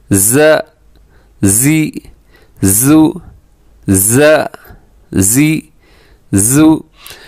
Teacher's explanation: اس کی آواز جو ہے یہ شہد کی مکھی کی جیسے آواز ہوتی ہے